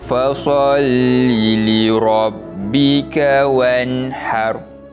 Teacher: dibaca dengan bacaan yang jelas tanpa dengung untuk bacaan nun mati tersebut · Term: izhar kholqi